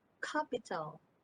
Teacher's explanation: the tongue tip comes off for the t